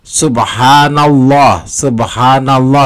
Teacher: dibaca tebal setelah Fatha pada suku kata na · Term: Tafkhim